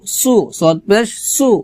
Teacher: সদ পেশ সু মোটা করতে হবে